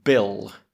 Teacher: You can hear the B. There's a vibration going on there for B. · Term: voiced